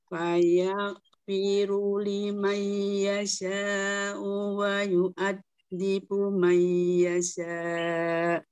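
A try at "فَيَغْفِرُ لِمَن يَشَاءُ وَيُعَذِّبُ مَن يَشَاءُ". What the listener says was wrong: Lima yang pertama belum terdengar. Tahan. Lima. Coba.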